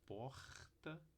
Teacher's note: Você pode falar porta, pode falar porta, pode falar porta, encostando só uma vez a ponta da língua